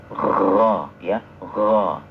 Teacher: huruf gho jangan syiddah kayak huruf g tidak juga ada ngoroknya